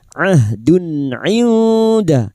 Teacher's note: Duma tanwin dibaca jelas tanpa mendengung. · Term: idhar halki